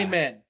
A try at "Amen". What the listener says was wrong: amen. Yeah, so it's like it's still the instead of a, but the emphasis is on the second syllable, not the first.